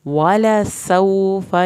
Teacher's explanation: سین کو سیٹی کی آواز کے ساتھ پڑھ کے